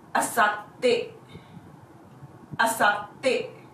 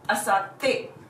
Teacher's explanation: There is a small tsu between sa and te, hence there is a small pause between the two syllables. The pronunciation would be asatte.